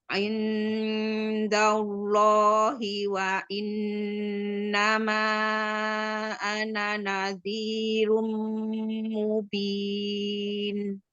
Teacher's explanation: indallah mau lafaz Allahnya lebih gendut lagi